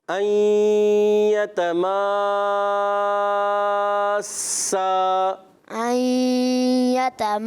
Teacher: آخر میں سین کے بعد الف ہے، اس کے بعد ہا یا حمزہ نہیں پیدا ہونا چاہیے